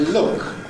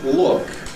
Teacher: So when there's a vowel after it, we get a clear L.